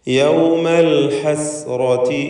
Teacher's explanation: ഹസ്റാത്തി റായിന് പൂർണ്ണമായ തഫ്ഖീം കൊടുക്കണം. തടിപ്പിച്ച റാ ഉച്ചരിക്കുക.